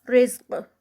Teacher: اور قاف کا اینڈ پہ قلقلہ